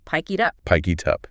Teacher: The K sound at the end of pick slides over to initiate the I in it. Then the T sound in it slides over to initiate the U in up.